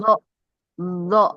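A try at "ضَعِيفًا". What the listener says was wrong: Nah, nah, jadi bukan zo ya, beda tempat. Kalau zo itu ujung lidah. Kalau dot tepi lidah kiri kanan ke gigi geraham. dhaifa.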